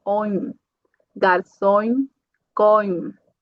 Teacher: Se eu tenho uma on no final também, vai ser on, ditongo nasal